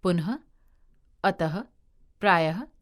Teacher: विसर्ग, इसका उच्चारण ह की तरह होता है